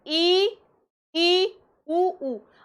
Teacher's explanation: जैसे ये हमारा मुख था, अब ये समृत, ई और ऊ, दो स्वरों को अगर हम बोलते हैं, ई स्वर क्या है बेटा, समृत में स्वर देखिए, समृत में ई, ऊ और ऊ, इनको हम बोलते हैं ई, ऊ। अब हमारी जीभ थोड़ा ऊपर जा रही है ना, अब हमारे तालु से टच होके थोड़ा सा सकरा भाग बन जाता है मुंह का, इसलिए इनको क्या कहते हैं, समृत।